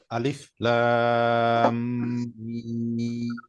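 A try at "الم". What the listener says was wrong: আচ্ছা, আরেকটু লম্বা হবে, লম্বার পরিমাণটা একটু কম হয়ে শোনা যায়।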